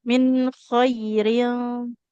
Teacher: nun sukun bertemu huruf K dia itu enggak dengung ya jadinya min bunyi nunnya jelas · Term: izhar